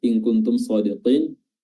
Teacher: nun sukunnya bertemu dengan kaf, nunnya disamarkan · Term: ikhfa